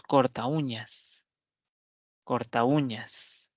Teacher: ¿En dónde cae la mayor fuerza de voz? ¿En la U o en la A? En la U. Por lo tanto, ahí lo que existe es un hiato.